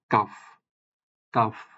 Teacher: এটা উচ্চারিত হবে জিহ্বার একেবারে গোড়া থেকে এবং সেই বরাবর উপরের তালুর শক্ত অংশ থেকে